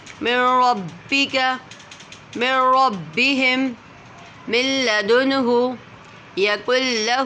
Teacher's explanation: را اور لام کو بغیر غنہ کے پڑھیں گے تو ادغام ہو رہا ہے